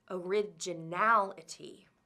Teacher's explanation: originality has six syllables originality and the fourth syllable is stressed the fourth syllable al is right before the word ending ity